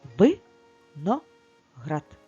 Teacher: тепер слово на склади ви на град скільки складів 3 і наголос у нас падає на третій склад на останній